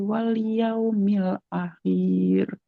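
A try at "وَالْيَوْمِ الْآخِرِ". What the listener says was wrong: Wal yaumil akhir, bukan wal yaumil akhir. Jadi yang panjang hamzahnya bukan kho-nya. Wal yaumil akhir. Enggak panjang kho-nya. Wal yaumil akhir. Akhir, bukan akhir. Wal yaumil akhir.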